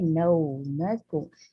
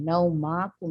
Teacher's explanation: ना तो लंबा करना है ना ही आ की साउंड देंगे, इसको अ की साउंड पे रखना है। नौ मकुम, नौमकुम सुबाता, अब यहाँ पे बढ़ाना नहीं है।